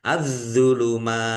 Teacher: Alif lam samsiah karena tidak dibaca. Langsung masuk ke huruf berikutnya yaitu dho, ditandai dho-nya ada tasdidnya. Dho-nya ditekan dan ditahan biar tampak double.